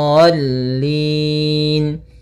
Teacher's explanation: Jangan terlalu lama jangan waladin cukup ya menekan di lamnya kemudian dikasrahkan langsung